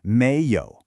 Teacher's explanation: Your voice starts low and rises up, like you're saying, "Really?" Then, yǒu is our familiar third tone roller coaster. So, the whole word has this rising, then dipping and rising sound · Mei is a second tone. It should sound a little like you're asking a question. Your voice starts low and rises up, like you're saying, really?